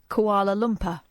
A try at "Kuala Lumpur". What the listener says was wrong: Oh, you mean Kuala Lumpur? Koala Bear Lumpur is what you're saying. It's koala.